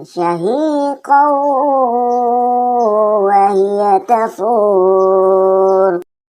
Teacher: Syahiqau wa hiya tafur, di mana huruf qaf yang berharakat fathatain bertemu dengan salah satu huruf idgham bigunnah yaitu waw, maka cara membacanya syahiqau wa hiya tafur, seolah-olah kita ingin menyebut huruf waw namun tertahan di situ, itu yang didengunkan.